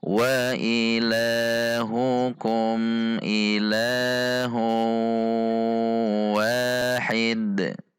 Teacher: Karena ini diwakafkan maka dal disukunkan sehingga huruf dal dibaca qalqalah, qalqalahnya kubro karena di akhir kalimat.